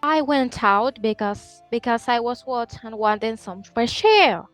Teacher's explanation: If you say some fresh air, you're using like a raising intonation, so that would be an American variety.